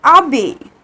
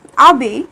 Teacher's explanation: but we do not pronounce h. This is a mute h in this verb. Okay, so we are pronouncing like abe.